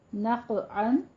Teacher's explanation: قاف کے اوپر قلقلہ کرنا ہے، قاف کو پر بھی پڑھنا ہے